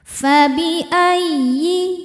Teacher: ya tasydidnya cukup dibaca dengan nabar, naikkan intonasi suara kita ya jika sebelum ya tasydidnya tidak ada tanwin atau nun sukun.